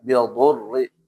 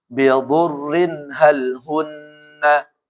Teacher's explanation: Yang pertama tebal dnya yang kedua rnya tipis ya